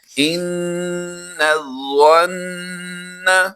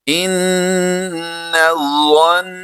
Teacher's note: اس لفظ میں بھی 3 حرف جو ہیں وہ مشدد ہیں، تو ان کی ادائیگی ہم نے 2 غنوں کے ساتھ کرنی ہے